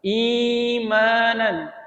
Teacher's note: 1 alif atau 2 harokat, tidak lebih panjang dari itu. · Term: mad badal